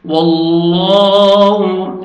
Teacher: لام سے پہلے زبر ہے تو لام کو موٹا کر کے پڑھیں گے